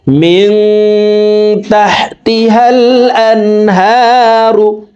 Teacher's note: মিং এখানে ইকফা গুন্না, দেখুন নুন সাকিনের পরে ইকফার 15টি হরফের ভিতরে একটি হরফ তা আসছে, এই কারণে এই নুন সাকিনকে নাকের ভিতরে লুকাইয়া গুন্নার সহিত পড়ব